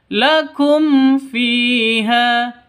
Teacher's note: Mim matinya jelas, fa-nya juga jelas. Kenapa? Karena ini hukum bacaan izhar safawi.